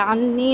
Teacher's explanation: نون مشدد اکمل غنہ اور 2 حرکت لمبا